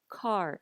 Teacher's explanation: there's less air coming out take the word car in english do you hear how there's air after the sound car